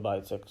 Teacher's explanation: Letter ba, from the wet part of the lips